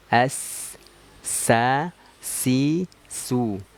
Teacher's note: huruf sin itu makharijul hurufnya keluarnya dari ujung lidah